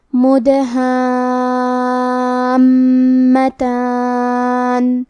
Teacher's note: الف پہ مد کا علامہ ہے. یہ مد لازم کلمہ مثقل ہے تو ہم اپنی آواز 6 مد کے برابر لمبی کریں گے. حرف المیم پہ تشدید ہے تو ہمیں 2 حرف کے برابر میم کو پڑھنا ہے.